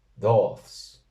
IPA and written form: 'dɔːθs (DAUÞS)